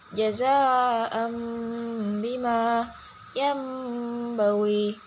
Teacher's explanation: suara Nun atau tanwin diubah menjadi mim dan bacaan mim harus disertai dengan dengung atau ditahan sepanjang dua harakat atau satu Alif sedangkan hurufnya sendiri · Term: iqlab, iklab